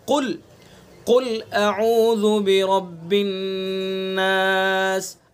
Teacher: उन 7 हरूफ में से काफ है, काफ। तो काफ को हम पुर करके मुँह भर के पढ़ेंगे।